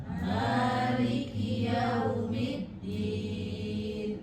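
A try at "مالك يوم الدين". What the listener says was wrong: Dalnya jangan terlalu din ya. ee lidahnya di perbatasan gigi dengan gusi did bukan did.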